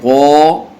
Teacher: غائن کو پر پڑھیں گے